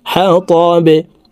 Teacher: বাকে ওয়াকফের ক্ষেত্রে সাকিন করে ফেলবো বা নিচের দিকে ধাবিত করে ধাক্কা দিয়ে সাকিন করতে হবে। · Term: কলকলার হরফ